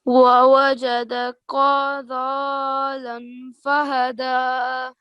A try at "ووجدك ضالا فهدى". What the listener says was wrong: Here again, I think there's an issue with your kaf. Here you are pronouncing this kaf with the thick sound. This is the one. Do you see this one I'm circling in that has a red color on it? This is the kaf that is the kalkala, and this is the one with the thick sound, the kaf.